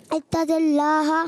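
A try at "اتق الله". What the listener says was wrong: نہیں، اتق اللہ، تل نہیں، قاف ہے، قاف اتق اللہ۔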